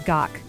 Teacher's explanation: Take ga, drop a K underneath, and you get ga. Ga becomes gak, closed off with a soft K.